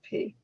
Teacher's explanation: you can feel the puff of air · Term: unvoiced sound